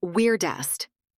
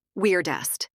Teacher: In American English, the word is pronounced weirdest. Weir with a strong R sound. Dest with a soft D.